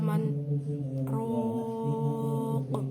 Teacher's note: Sakta yaitu berhenti sejenak 2 atau 3 huruf tanpa mengambil nafas